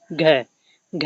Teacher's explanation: घ जो है कंठ व्यंजन है ना कि दंती व्यंजन